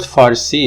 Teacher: the R is neither devoiced nor tapped, so it's a trill R. So basically the R sound is alveolar and it is voiced usually, but here it could be tapped, it could be trilled, it could be devoiced trilled so far.